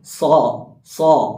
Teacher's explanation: അപ്പൊ സ്വീ അഥവാ വായ നിറച്ചിട്ട് വരേണ്ട ശബ്ദമാണ് ഈ സ്വാദ് എന്നത് അപ്പൊ ഈ സ്വാദ് പറയുമ്പോൾ നമ്മുടെ നാവിന്റെ മധ്യഭാഗം അണ്ണാക്കിലേക്ക് ഉയരും അണ്ണാക്കിലേക്ക് ഉയരുന്ന സന്ദർഭത്തിലാണ് ഈ ശബ്ദം നല്ല രീതിയിൽ അതിന്റെ കൃത്യം മഹ്റജോട് കൂടി